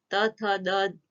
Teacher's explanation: એ તમે બોલો છો ત્યારે તમને ખબર છે જીભ દાંતને અડે છે એટલે દંત્ય વ્યંજન છે